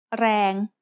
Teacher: A word using the long vowel ส ร ะ แ อ is แ ร ง which means power. แ ร ง has a low-class consonant and a live ending, so it is pronounced mid-tone.